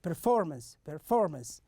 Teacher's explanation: So we have the stress on the second syllable. You can see it in the red font here.